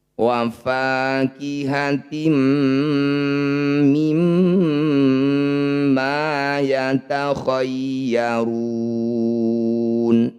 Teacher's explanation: Maqabi bertemu huruf hidup, kemudian dibaca berhenti, disebut bacaan mad arif disukun. Cara membacanya ru, ini panjangkan 6 harokat, huruf terakhir sukunkan.